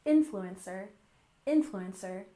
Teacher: Once again, stress the first syllable, influencer, influencer.